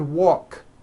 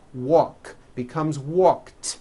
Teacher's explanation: the word walk which has an unvoiced K sound at the end